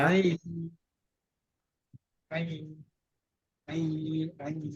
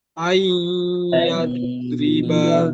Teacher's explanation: Tapi beda dengan nun sukun bertemu ya, itu harus mesem hidung ya. Ay dipencet harus kerasa di hidung. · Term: idgham nakis